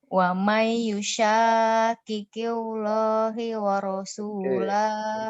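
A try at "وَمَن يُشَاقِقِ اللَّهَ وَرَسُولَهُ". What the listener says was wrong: Kalau ada huruf di bawah Kak, bertemu lafaz Allah itu cara bacanya harus tipis gitu ya Kak ya. Qilla, jangan gitu. Killa gitu aja. Kalau di bawah.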